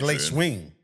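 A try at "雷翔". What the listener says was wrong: Kind of, but it rhymes with thong. So Lei Xiang.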